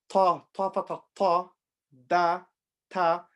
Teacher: the tip of the tongue touches the inside front 2 teeth, touches the gums of the front 2 teeth.